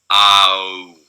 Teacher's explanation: And so you can see F2 here is lowering a little bit, but mostly pretty steady. F1 is really diving as we go from low vowels to high vowels. · a glide from, again, low to high vowels within the back part of the vowel space